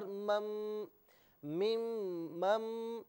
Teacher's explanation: ناظرین یہاں چونکہ نون ساکن کے بعد میم ہے تو ادغام مع الغنہ ہوگا، میم ساکن کی آواز ہوگی، اور یاد رہے کہ یہاں پر غنہ بھی کیا جائے گا